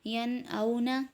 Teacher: اب اس میں نون ساکن کے بعد حمزہ ہے، یہاں پر اظہار کا قاعدہ ہو رہا ہے، حروف ہلکی میں سے ہم نے اوپر پڑھا ہے، تو یہاں اظہار ہو رہا ہے ین اونا۔